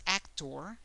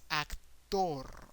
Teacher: is actor the emphasis is more in the first syllable actor but in Spanish the emphasis is in the last syllable